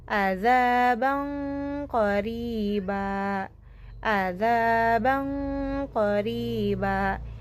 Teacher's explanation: mengalirkan suara gunnah sempurna secara tafkhim atau tebal · mengalirkan suara dari mulut atau jauf terharang oleh pangkal lidah, menyerupai suara eng pada bahasa Indonesia. · Melafalkan nun secara samar pada makhraj lisan dan mempersiapkan pelafalan pada makhraj huruf berikutnya. Karena qaf huruf tafkhim, maka posisi rahang pada rahang tebal. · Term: ikhfa abad